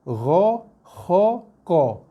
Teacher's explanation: qaf juga bila berbaris atas dia bunyi qa sedikit bulat